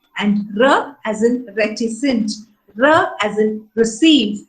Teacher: the post-alveolar sound, wherein tip of the tongue touches the portion just behind the alveolar